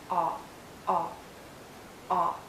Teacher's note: it's a short sound and a very open and rounded sound make your lips rounded and lower your job ah ah ah